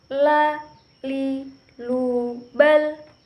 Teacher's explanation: Huruf la keluar dengan menyentuhkan lidah terdekat dengan langit-langit bagian depan.